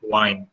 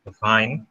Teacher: Due to their mother tongue, due to their speech, they don't have this V thing, so they make it near possible sound which exists in their language, that is wa. Bilabial wa, not V. Labiodental V